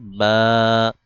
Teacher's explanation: দুই ঠোট থেকে বা দুই ঠোটের ভেজা জায়গা থেকে উচ্চারণ করতে হবে